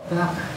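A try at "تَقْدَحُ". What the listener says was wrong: Ya, nggak ada boleh hamas. Dia jahar. Sifatnya jahar ko itu ya. Taqdo. Ya, taqdo. Tapi nggak boleh tebal. Dia qalqalahnya kalau sugro.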